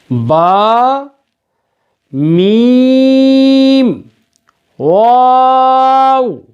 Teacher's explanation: با، میم، واو، یہ تینوں حروف ہم مخرج ہیں، ہونٹوں سے پڑھے جاتے ہیں۔ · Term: حروف شفوی